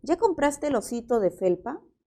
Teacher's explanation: aquí tenemos la entonación ascendente, ¿verdad? Porque es una pregunta, pero podría pasar a ser una afirmación. Ya compraste el osito de felpa.